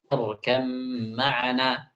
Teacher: Asalnya kan ya bunayyarkab ma'ana. Diubah ba-nya itu menjadi mim. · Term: ba pada mim